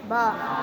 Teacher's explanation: दोनों होठों के मिल जाने से। जी, दोनों होठों के गीले हिस्से से बा अदा होता है